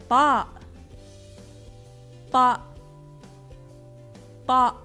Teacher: like the T in a table, yet heavy in pronunciation. This letter is still somewhat similar to English sound T, but already more difficult to pronounce.